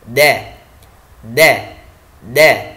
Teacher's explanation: Yang pertama adalah memiliki sifat syiddah dan jahr, nafas dan suara tertahan.